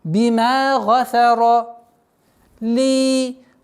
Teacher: Долгота в размере двух огласовок кясры.